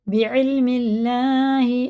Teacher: اللہ کا لام زیر سے باریک پڑھیں گے